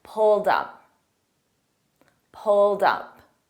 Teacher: a soft D and then we transfer it to up pulled D dup pulled up pulled up I pulled up my